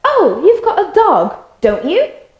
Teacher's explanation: So if you say, oh, you've got a dog, don't you? Notice my voice goes up, so that's a genuine question.